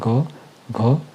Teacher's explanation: स्वर तंत्रिका में कंपन महसूस होता है। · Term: सघोष